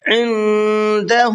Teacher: نون ساکن کے بعد میں دال ہے، اخفا کریں گے